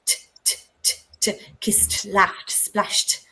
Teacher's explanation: So the sounds that have no voice, like kiss or push or laugh, it sounds like a T.